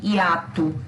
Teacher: hiato, se escreve com O no final, mas pronuncia U. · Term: semivogal